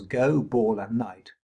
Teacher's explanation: go, ball and night all have a rhythmic stress on them but no pitch change. So they're stressed but unaccented.